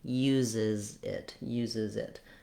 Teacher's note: when you make it plural, uses, you add another Z sound and a vowel I sound